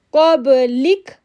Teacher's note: قاف کو با کے ساتھ جوڑیں گے تو ایکو ساؤنڈ بنائیں گے